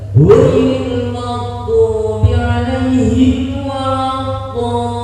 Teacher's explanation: Tidak boleh didengung, tidak ada lam dengung, tidak boleh lamnya didengungkan. Walaupun tasdid sudah ditasdid lam tidak boleh didengungkan, ya harus dibaca seketika. · Karena doanya itu namanya mat wajib, ya, mat wajib yang harus 6 harokat dan kemudian setelahnya ada lam tasdid, dan lamnya tidak boleh didengungkan. Jadi harus tasdidnya benar-benar kelihatan.